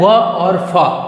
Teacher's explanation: दंत प्लस ओष्ठ, दंत दांत से और ओठ, ये दोनों का मिला जुला स्वरूप है